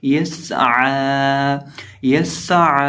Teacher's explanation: ये 3 हरूफ हैं जिनके अंदर सीटी की आवाज़ पैदा होती है। तो सीन भी सीटी वाले हरूफ में से है, तो इसको सीटी के साथ पढ़ेंगे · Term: हरूफ सफ़ीरिया